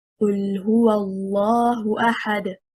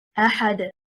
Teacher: The word أحد, the stress is on harakat al-hamzah because it is stronger. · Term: النبر